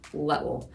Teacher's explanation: In Scottish accent, you usually take down that short I sound, the which we would say eh, like little, and it would become little.